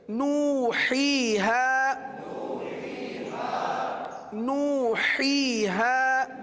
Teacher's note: ہا اور ہا دونوں ایک ساتھ آئے ہیں، تو دونوں کی ادائیگی میں فرق جو اپنے اپنے مخرج سے ادا کرنا ہے وہ فرق رکھنا بہت ضروری ہے